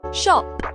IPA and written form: ʃɒp (shop)